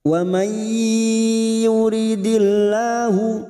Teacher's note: Wa may nun sukun bertemu ya idgham bi gunnah siap masuk dan mendengung, masuk pada huruf berikutnya yaitu huruf ya dan mendengung selama 2 atau 3 harokat